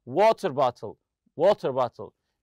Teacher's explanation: We stress the word water on the compound noun.